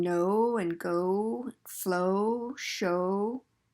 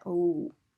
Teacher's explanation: the w just means that your lips are rounded when you say that oh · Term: o sound